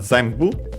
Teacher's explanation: By the way, as a reminder, the N becomes M because of the following bu, and so bilabial consonant. Zenbu should be accent on the first syllable despite being Chinese compound · as a reminder that N becomes M uh because of the following B